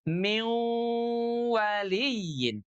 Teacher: Contohnya kalau min bertemu dengan kata waliyin, maka ujung lidahnya ketika mengucapkan min tadi itu semuanya pindah masuk persis totalitas ke tempatnya huruf wa kecuali sifat ghunahnya saja yang keluar dari hidung yang ikut masuk ke huruf wa · Tapi kalau idgham, maka huruf nun yang tadinya ada di langit-langit ujung lidahnya, maka dia akan pindah semuanya ke huruf yang baru.